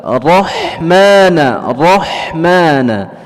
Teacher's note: huruf ra yang bertasydid kemudian fathah, ya, dibaca tebal